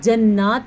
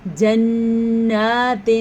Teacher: نون کے اوپر شد آ گئی ہے تو غنہ ضرور کرنا ہے. جنات نہیں پڑھنا آپ نے، جنات غنہ کرنا ہے، ٹھیک ہے.